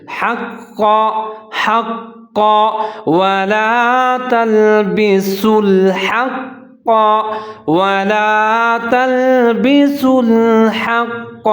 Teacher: قاف موٹے والا ہے اور قاف کے اوپر تشدید ہے، ادغام کریں گے یعنی کہ موٹا کر کے پر کر کے پڑھیں گے